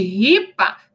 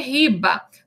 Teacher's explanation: o P é uma consoante surda e o B é uma consoante sonora · o P não vibra as pregas vocálicas, o B, sim. Então, de ripa, nós passamos a ter riba.